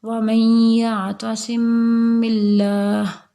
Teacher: میم کو با میں مدغم کر کے اس کو یہاں پہ اخفا کریں گے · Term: اخفاء شفوی